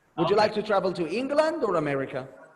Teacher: it rising and the last the end of the sentence or the last word the last option make it falling because this is the closing of your sentence